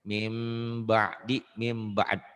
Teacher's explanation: Ada m-nya, bunyi nun matinya, bunyi n-nya, bunyi tanwin juga kan an idun ujungnya n. Bunyi n-nya berubah menjadi m. Tapi pengucapannya agak bindeng. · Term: iklab